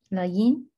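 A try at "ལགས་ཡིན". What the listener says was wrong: Yeah, perfect.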